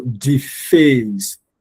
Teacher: you don't stress the D, you stress the face